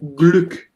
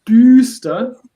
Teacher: Always, if you have 2 consonants or explosive consonants after a vocal, you have to pronounce this vowel in a short way, like in here. When you have Glück, it's the open version of Ü, Glück. But when you have düster, it's the long and closed version of the vowel, because after this vowel there is only 1 consonant.